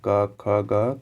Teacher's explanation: अगर पढ़ोगे क, ख, ग तो आपको कंठ से निकलेगा उसका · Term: कंठी व्यंजन